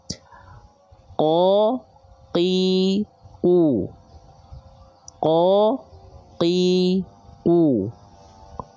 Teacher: ketika kita praktikkan itu bunyinya enggak keluar ada perecikan-percikan nafas sedikit pun. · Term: jahr